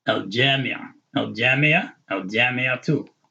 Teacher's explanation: because the jamia has the ta mabuda on the end, which would ordinarily be like a H sound, but you have to pronounce the ta with the dhamma